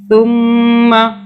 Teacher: ثم، سا کو سافٹلی ادا کرنا ہے، زبان کو دانتوں کے درمیان میں رکھیے، تھوڑا سا باہر کر کے تو ادا ہو جائے گا